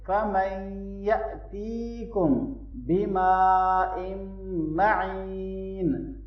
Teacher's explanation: میم اور با کے درمیان نیزل ساؤنڈ کریں گے